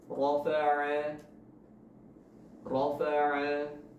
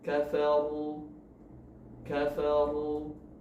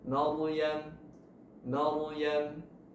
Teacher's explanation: Kita masuk ke yang pertama, dibaca tafkhim atau tebal. Huruf ra dibaca tebal karena pangkal lidah dinaikkan, ya, bukan karena memonyongkan mulut, tapi karena pangkal lidah yang terangkat.